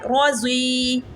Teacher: را بھی موٹی، ضاد بھی موٹا پڑا جائے گا، اور وقف کی صورت میں یا پہ جزم لگ جائے گی تو وقف بن جائے گا روزی.